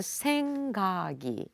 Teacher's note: supposed to be usually K sound, but it's followed by vowel sound E. Then actually it retains G original sound, so that you will pronounce as a 생각이. · So in those cases, simply you can think about French liaison. So the previous final consonant is linked to this vowel sound of the next syllable. For instance, if you have a word like 생각이, second syllable 각, the 기억, supposed to be usually K sound, but it's followed by vowel sound E.